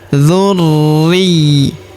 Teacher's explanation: Huruf ri kita tahan dan kita tekan karena terdapat tanda tasydid di sini di atasnya.